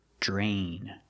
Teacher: we see DR together, it makes the j sound, like jump and juice, j. Plus the R, drain.